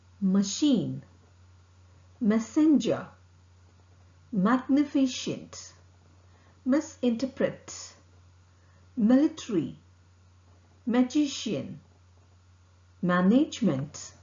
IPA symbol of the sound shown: m